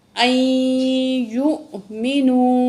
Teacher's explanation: حمزہ کو جھٹکے سے پڑھیں گے